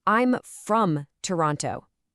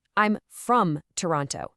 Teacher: We stress the word from. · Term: sentence stress